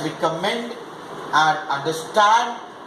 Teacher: there are a few words that carry third syllable accentuated, that is stress pronounced more prominently